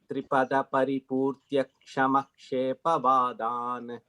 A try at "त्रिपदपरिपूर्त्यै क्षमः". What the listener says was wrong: third line la and எப்பவுமே இந்த க்ஷ வந்ததுனாக்கா அதுக்கு முன்னாடி if you have a visarga you have to say that visarga because you cannot join it with anything except for ksha. So on the third line வந்து yasma darpat and then pause tripada paripurtya kshamaha அப்படி.